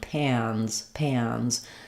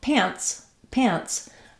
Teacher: In pants, I'm going to be shorter on my vowel in terms of duration. It's still the same vowel sound, but now when I have the n's, both of those are continuing sound.